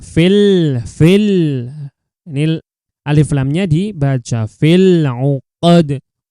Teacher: Fil 'uqad ini alif lamnya ini bertemu dengan huruf ain. Ain itu harus dibaca dengan jelas, alif lamnya harus dibaca dengan jelas. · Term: alif lam qamariyah